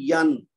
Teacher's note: نون ساکن کے بعد حمزہ ہے جو کہ حرف ہلکی ہے. تو اب ہم اس کو ظاہر کریں گے